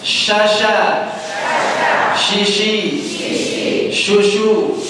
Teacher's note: Shin di mana? Tengah lidah. Naikkan tengah lidah kayak musir ayam, Pak.